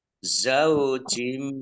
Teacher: Kasroh tanwin bertemu dengan huruf mim, idgham bi gunnah. Idgham masuk dan berdengung. Bi dengan gunnah mendengung.